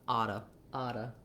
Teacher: So think about it like a D, and then letter O is going to say vowel schwa